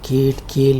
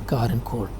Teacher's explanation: which are created with the help of the tongue against the vellum. There is a voiceless velar sound represented by the symbol k, which occurs not only in kale, but is also found in initial sounds in car and core.